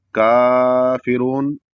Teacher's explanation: کافرون اتنا لمبا نہیں کھینچیں گے کیونکہ وہ مد ہو جائے گا، اس وجہ سے صرف 1 الف کے برابر ہی کھینچیں گے یا 1 انگلی کے برابر کھینچیں گے۔ کافرون، اس میں جو را ہے وہ موٹا پڑھا جائے گا کیونکہ را کے اوپر پیش ہے